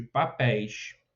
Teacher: É o ditongo aberto, na última sílaba.